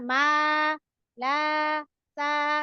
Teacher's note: alif ini bermahrajkan al-jauf, yang di mana suaranya ini harus keluar dari rongga mulut dan rongga tenggorokan